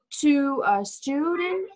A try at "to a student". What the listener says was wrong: Tức là cái chữ U nó phải đẩy nhọn ra trước xíu nữa. Tại vì khi đọc nhanh vô câu á, chị đọc thành chữ U. To là nghe nó không hay. To a student. To.